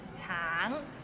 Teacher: 橙 it means orange, but some people might find it difficult because the end has a little ng, so it's a bit of nasal sound